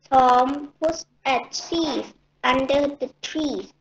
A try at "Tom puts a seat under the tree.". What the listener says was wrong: That was great. Perfect.